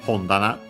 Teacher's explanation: luckily accented on the ho